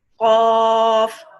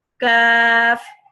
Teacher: This one is qaf, more deep, okay, touching the soft palate, the pink part, which is soft palate.